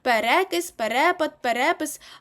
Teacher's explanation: коли у вас є пере наголос падатиме на другому складі на друге е